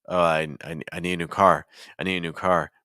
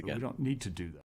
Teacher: when the need is stressed and is followed by a to, well then it might be more likely to actually keep that T sound in to. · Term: keep the T sound